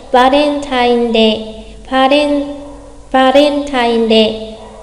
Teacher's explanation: chúng ta có chữ bầu, chữ vờ đọc giống nhau, cho nên bạn có thể đọc lái hẳn sang chữ vờ là va thay vì là ba, được không đọc quá rõ là Valentine mà là Valen, kiểu lái chữ vờ ấy.